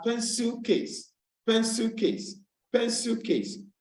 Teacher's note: So for a word as pencil case, pencil case, pencil case, you realize that the stress is placed on the first word and also on the first syllable of the first word.